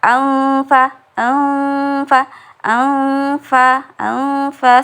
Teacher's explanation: ada suara yang di keluar dari hidung Jadi terdengar seperti dengung